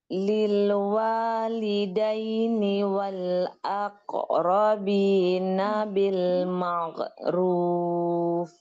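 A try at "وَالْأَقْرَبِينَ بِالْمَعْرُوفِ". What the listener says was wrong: Bukan maghrub tapi ma'ruf. Bukan ghain tapi ain.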